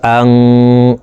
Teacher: নুন সেকেন্ডের পরে ইকফার 15টি হারফের ভিতরে একটি হারফ তা আসছে, এই কারণে এই নুন সেকেন্ডকে নাকের ভিতরে লুকাইয়া গুন্নার সহিত পড়ব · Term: ইকফাহ গুন্না